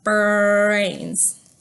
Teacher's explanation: for our B, we bring our lips together, ba, and then we're gonna have to bring our tongue all the way back for our brains. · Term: R blend, B-R